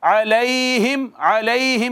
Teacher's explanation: علیہم میں یا ہے، ساکن ہے، ما قبل مفتوح ہے، یا مدہ نہیں ہے بلکہ یا لین ہے